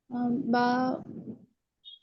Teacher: দুই ঠোঁটের ভিজা অংশ থেকে।